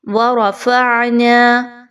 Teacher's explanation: را کے اوپر جزم کی علامت ہے, را کو پر پڑھا جائے گا · عین کے مخرج کو خاص توجہ دیجیے, اچھے طریقے سے حلق کے درمیانی حصے سے ادا کیجیے